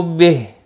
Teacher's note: ہا وقف کی صورت میں ہا ساکن پڑھا جائے گا